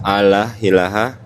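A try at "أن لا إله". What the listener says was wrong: Bukan Allah, Allah ilaha. Bukan Allah, Allah. Enggak pakai H ya. Allah ilaha. alla ilaha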